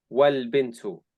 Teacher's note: in pronunciation, the lam follows immediately after the final vowel of the preceding word · you don't say the alif, you say wal bintu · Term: Hamza Wasl